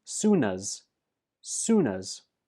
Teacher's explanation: Soon is stressed, and as is pronounced us. The last sound in soon is the N, and that links to us to become soonas